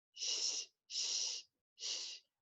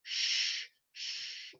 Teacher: The Japanese SH is sh, sh, sh. And the English SH, the tongue is back more and it's stronger